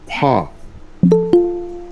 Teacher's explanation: নিচের ঠোঁটের পেট বা ভিজে স্থান সামনের উপরের দুই দাঁতের আগার সঙ্গে লাগিয়ে। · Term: 14 নম্বর মাখরাজ